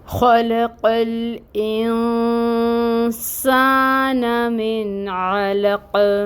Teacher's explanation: خو حروف مستعلیہ میں سے ہے، اس کو مفخم ادا کریں گے، یعنی پر پڑھا جائے گا، یہ موٹا کر کے ادا کریں گے، اور اس کے اوپر فتحہ کی حرکت ہے، زبر کی حرکت جس کو 1 کاؤنٹ پڑھا جائے گا، لمبا نہیں کریں گے۔ خو، لام اور قوف تینوں پر فتحہ کی حرکت ہے، تینوں کو برابر رکھیں گے مقدار میں اور ایک ایک حرکت پڑھیں گے۔ یہ بھی 1 کاؤنٹ پڑھا جائے گا، یہ بھی 1 کاؤنٹ پڑھا جائے گا۔